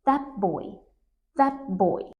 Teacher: The t changes to a p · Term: assimilation